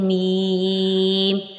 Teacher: اس کا مخرج دونوں ہونٹوں کا خشک حصہ ہوتا ہے ، دونوں ہونٹوں کے خشک حصے کو ملائیں تو